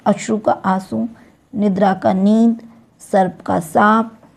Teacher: कभी-कभी धवनी अनुनासिक नहीं होती हैं उनको भी अनुनासिक ही कर देते हैं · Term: अनुनासिक करण